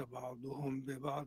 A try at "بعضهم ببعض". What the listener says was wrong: بعضهم ببعض بفتح الضاد.